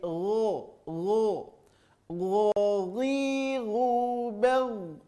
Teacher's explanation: terasa di ujung tenggorokan keluarnya tapi lebih lembut saja bunyinya daripada huruf Ko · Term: huruf gho